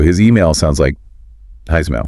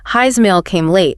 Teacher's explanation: A word ends in S, like his, and the next word starts with a vowel, like his email. That S sound often gets voiced. It vibrates. So, it sounds more like a Z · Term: linking with a Z sound